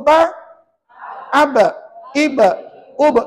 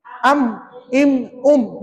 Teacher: ba melantun mim tak melantun